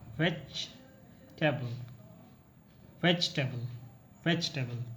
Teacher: You don't need to pronounce the e sound after the letter G. It should be silent.